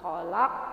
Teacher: khalaq sama qofnya juga harus dipantulkan lebih kuat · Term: Qalqalah Kubro